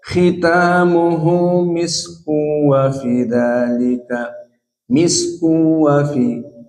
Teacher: Jika disambung khitamuhu misku wa fi. Lakin qiraah Hamzah idgham tanwin kepada waw namun bila gunnah. Dibaca khitamuhu misku wa fi dzalika, misku wa fi, faidan bidun gunnah. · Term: idgham bila gunnah